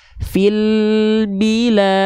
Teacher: ketika lam sukunnya tuntas, lidahnya turun, bi-nya masuk.